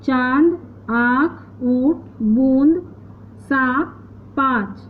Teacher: इस ध्वनि का उच्चारण मुख और नाक की सहायता से किया जाता है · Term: अनुनासिक